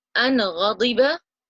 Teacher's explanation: Ghain comes from the top part of our throat, where the letter Kha comes from